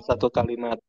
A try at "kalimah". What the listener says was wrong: Nah, satu kalimat. Bukan satu kalimat ya. Satu kalimah. Kalau kita mau bicara bahasa Arab, berarti satu kalimah menggunakan ha. Jadi bahasa Arabnya kata itu kalimah. Harus ada gitu ya.